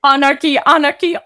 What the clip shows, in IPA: anəki